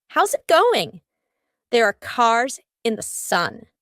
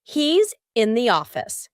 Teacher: Both of these sentences have an S and then a vowel. What happens here? In each of these words, the S becomes a Z. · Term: linking the S plus a vowel